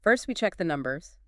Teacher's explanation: And sometimes they are, but often it's a signaling error. The speaker is accidentally using the falling pattern in the middle of their sentence. Ah. So they say, first we check the numbers, and they drop their voice.